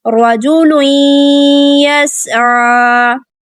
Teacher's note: را کو پر پڑھیں گے، رجل یسعى. سین ساکن ہے، سٹی واضح کریں گے، عین ہے حلق کے درمیان سے ادا کریں گے